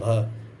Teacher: जो भ वर्ड है वो घोष भी होगा, महाप्राण भी होगा और ओष्ठ व्यंजन भी होगा।